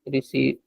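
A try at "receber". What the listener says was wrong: No, you're just saying the English word receive.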